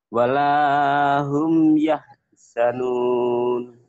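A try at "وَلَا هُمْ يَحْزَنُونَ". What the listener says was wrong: Walahum yahzanun. Zainya agak rapuh dikit. Walahum yahzanun.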